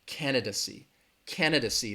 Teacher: the stress is on that first syllable candid see that third syllable has that schwa that duh duh